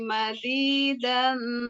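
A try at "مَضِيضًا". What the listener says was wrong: Mazidon, bukan mazidan, bukan mazidon. Ibu, sifat yang harus diperhatikan tadi makhrajnya sudah pas keluar di sini. Cuman sifatnya masih ada yang kurang, yaitu tadi itbak itu tadi, Bu. Yang itbak itu yang si lidah itu terkatup begitu. Jadi ketika huruf mengucapkan huruf do, itu si lidahnya ke bawah gitu.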